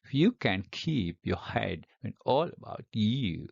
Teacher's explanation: In each foot, you see now, we have one unstressed syllable followed by a stressed one. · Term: rhythm